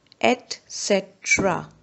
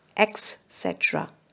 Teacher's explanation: we often pronounce etc. with an X sound, but in actual it is pronounced with a T sound